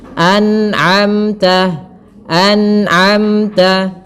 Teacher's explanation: dijelaskan nunnya dan tidak boleh memantul. Tidak boleh anamta.